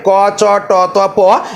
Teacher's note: দেখুন অখোস ধ্বনি হচ্ছে যে সমস্ত ধ্বনি উচ্চারণ হওয়ার সময় ধ্বনিদ্বার কম্পিত হয় না। তাহলে যে ধ্বনিগুলো উচ্চারণ করার সময় আমাদের ধ্বনিদ্বার মূলত কম্পিত বা কম্পন সৃষ্টি করে না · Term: অঘোষ ধ্বনি